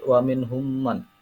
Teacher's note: Dan setelah lafadz wa minhum ada man, mim mati wa minhum man. Mim mati bertemu dengan mim, yaitu bacaan idgham mutamasilain